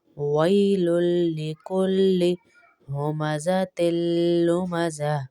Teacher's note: تا کو لام سے ملائیں گے